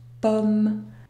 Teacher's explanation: la combinaison om n'est pas une voyelle nasale